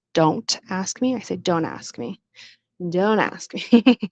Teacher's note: So the T kind of disappeared.